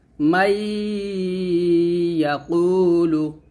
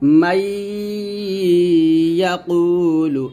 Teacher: জিহ্বার মধ্যখান উপর তলার সঙ্গে লাগিয়ে ধরে রেখে গুণনা করবেন